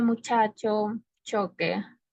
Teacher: También tenemos a las aficadas que igualmente existe un bloqueo de aire y después sale como una explosión.